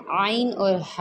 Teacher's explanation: ये वस्ते हलक यानी हलक के दरमियानी हिस्से से अदा होते हैं